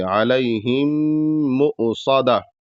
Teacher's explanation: علیہم پر بھی گنہ ہوگا کیونکہ آگے مصدہ پہ میم جو ہے وہ مشدد ہے